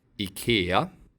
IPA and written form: ɪˈkêːa (IKEA)